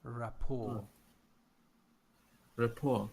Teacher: It's not that diphthong or triphthong. It's full O.